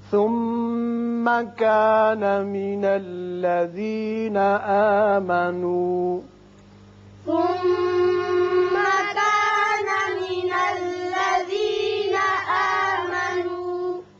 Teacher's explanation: میم مشدد ہے، غنہ کریں گے